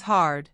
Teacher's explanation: Hard becomes hard with a strong curled tongue at the end. To practice the American R, curl your tongue slightly back without touching the roof of your mouth.